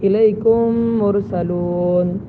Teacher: اب دیکھیے یہاں پر میم ساکن ہے، اس کے بعد مرسلون کے شروع میں بھی میم ہے، تو اب اس میم کو اب یہاں پر ادغام کر کے غنہ کے ساتھ پڑھیں گے الیکم مرسلون، اور اس کو ادغام صغیر مثلین کہتے ہیں۔